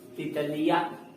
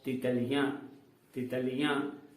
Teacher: जब हम चंद्रबिंदु का उच्चारण कर रहे हैं तो किसका सहारा ले रहे हैं? कहीं ना कहीं नाक का सहारा लिया जा रहा है इसके उच्चारण में